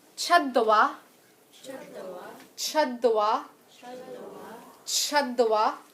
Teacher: Where you're making that ch sound, you'll notice your tongue's touching your palatal ridge.